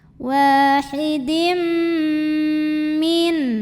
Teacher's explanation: Wahidim dan tahan, dengungkan bunyi M-nya. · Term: idgham bil gunnah